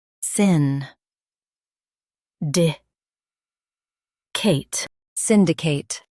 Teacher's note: Stress syn and keep cate clear.